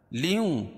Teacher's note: لیوں ادغام مع الغنہ، کیونکہ تنوین کے بعد ادغام مع الغنہ کے 4 حرفوں میں سے واو ہے تو یہاں غنہ ہوگا